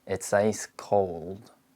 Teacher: The O diphthong starts further back in American English, and the I diphthong starts from a more closed position when it appears before unvoiced consonants